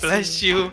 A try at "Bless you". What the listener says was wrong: Why do you say blesh? You say blesh. Bless you.